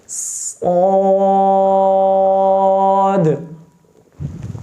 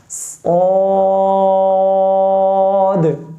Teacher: ज़बान की जड़ के करीब वाला हिस्सा, यानी ज़बान के सेंटर से पीछे जड़ तक, वो सारा हिस्सा ऊपर तालू के साथ मिलेगा, जिसकी वजह से यह हर्फ पुर हो जाएगा